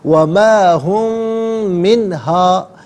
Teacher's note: ہم میں میم ساکن ہے، اسے من کی میم کے ساتھ ملائیں گے اور میم کی آواز کو غننے کے ساتھ ادا کریں گے۔ وما ہم منہا بی مخرجین، ملا کر پڑھیں گے بمخرجین۔